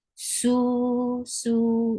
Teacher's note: Su is 2 counts long because it's the combination which is part of the long vowels. Waw sakina qablaha magmoom.